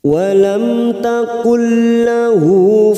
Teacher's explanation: mim sukun bertemu ta Idhar syafawi kita baca jelas